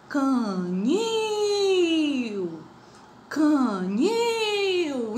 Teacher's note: Então ela é oxítona, porque a sílaba tônica é a última.